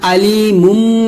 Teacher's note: মিমের উচ্চারণ দুই ঠোঁট মিল করে উচ্চারণ করতে হয়